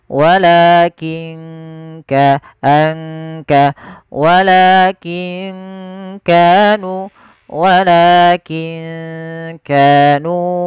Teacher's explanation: Kaf makhrajnya dari pangkal tenggorokan kita.